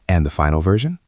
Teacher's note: And the final version? with a rising intonation. · With a rising intonation. It invites the boss to fill in the blank.